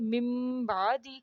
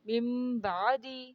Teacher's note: نون کی آواز میم میں بدل جاتی ہے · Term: اقلاب